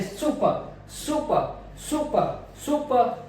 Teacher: सु ऊपर रहेगा, प नीचे रहेगा, क्योंकि ये मेरा जो अनस्ट्रेस्ड है, सु मेरा स्ट्रेस्ड है।